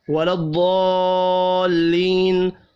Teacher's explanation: بڑی مد پانچ الف کے برابر کھینچ کر پڑھیں گے